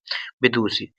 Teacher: ये वाला सा होता है, मूर्धन्य सा बोलते हैं इसको